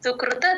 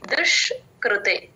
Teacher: కొమ్మిస్తే ఉ లాగా చెప్పకూడదు ఉ అచ్చు ఉడుతలో ఉభే భ కి మహాప్రాణం సుకృత సు కృత కృ తేల్చి చెప్పాలి అస్సలు స్ట్రెస్ ఇవ్వకూడదు